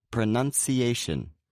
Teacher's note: It may seem as though this word has two stresses, but the A is the main stress and the U is the secondary stress